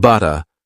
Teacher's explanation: Words like butter become butta, with a gentle T sound instead of a hard D sound.